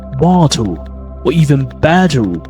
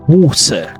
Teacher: Another key difference in terms of two accents, American and British accent, is the difference between the T and D sounds. The letter T in the middle of the words, American often they pronounce it with a flat T, which sounds like soft D sounds.